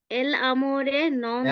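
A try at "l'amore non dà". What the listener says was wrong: এলামরে না এলামরে না এটা হবে লামরে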